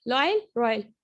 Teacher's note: एक साउंड से दूसरे साउंड से तीसरे साउंड में ग्लाइड हो रहा है, ठीक है, रोल करता हुआ जा रहा है, लॉयल रॉयल, रैपिडली और अनइंटरप्टेड।